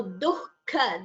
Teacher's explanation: chant it as dukkha it is not dukkha it is dukkha the visarga is heard before the kha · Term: jihva muliya